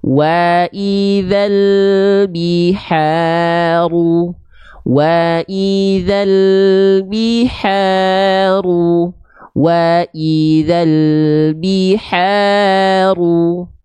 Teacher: ketika fathah dia vokalnya yang keluar bukan O, bukan condong pada vokal O, tapi condong pada vokal A, maka dia termasuk ke dalam huruf yang tipis. · Bukan hanya sekedar buka mulut, tapi sering kita analogikan buka mulut sedikit senyum. Wa idza, perhatikan setiap vokal A yang saya lafalkan, dia ada senyumnya sedikit.